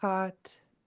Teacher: it's a long high tone A.